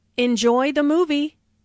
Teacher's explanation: Notice how the intonation rises on movie. This is said in a friendly way and is followed by an exclamation point.